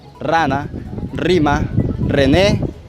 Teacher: son aquellos en los que se produce una vibración con la punta de la lengua únicamente el fonema r rara rima rené entre otros fonemas según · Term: fonemas vibrantes